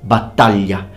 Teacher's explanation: please notice that the GL is pronounced ly, battaglia.